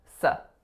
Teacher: So it's an S going into a really short schwa sound.